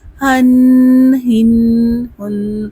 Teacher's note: ہا یہ ویسے حلق سے ادا ہوتا ہے، اس میں سانس باہر کی طرف آتا محسوس ہوتا ہے